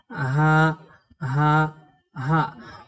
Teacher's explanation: গোলহা উচ্চারণে মুখ থেকে কোন রকমের বাতাস বের হবে না। · গোলহার মাখরাজ হলো এই কণ্ঠনালীর শুরু থেকে বাতাস ছাড়া শক্ত করে পড়তে হয়